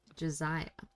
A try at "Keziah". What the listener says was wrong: Keziah with a K.